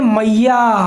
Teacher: जैसे आप कहते हैं मैया, तो जब या को आप काफ़ी लंबा खींच रहे हैं तो ये प्लुत स्वर हैं जिनमें दीर्घ से भी अधिक समय लग रहा है।